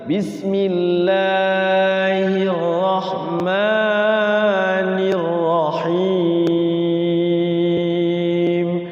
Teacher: berarti himnya panjang karena dua harokatnya ngambilnya agak panjang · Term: Mad thobi'in